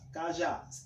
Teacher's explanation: A última sílaba, temos duas sílabas. O já é a sílaba mais forte, portanto, essa palavra é oxítona. Como é a última sílaba mais forte, a sílaba tônica, chamamos de oxítona.